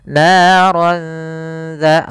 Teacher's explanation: tanwinnya kita samarkan ke huruf dzal, karena ikhfa itu membaca di antara izhar dan idgham